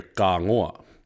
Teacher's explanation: So not only did the T change to a K, the N changed to a G sound. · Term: ka form